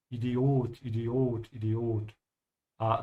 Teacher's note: in German you have to stretch the O